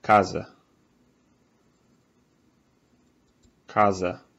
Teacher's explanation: if you have a word with an S in between two vowels like casa it's actually a Z sound